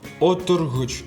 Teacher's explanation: Тут «о» и все остальные гласные после него твердые. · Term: твердое «о»